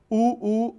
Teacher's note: ऊ ऊ में दोनों होंठ नजदीक आ रहे हैं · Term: ओष्ठ्य वर्ण